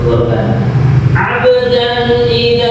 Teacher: dibaca mendengung ya supaya indah kita tunaikan mendengungnya dua harakat